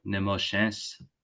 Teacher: some speakers will kind of still have a little bit of nasalization